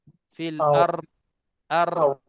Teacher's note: Dan kita tahu huruf ra berlakunya getaran di lidah kita. Fil ar. Jadi kalau kita terasa waktu kita dah berhenti, hanya ra tu lidah kita tergegar dengan menyebutnya huruf ra, maknanya kita belum lagi sebut dha.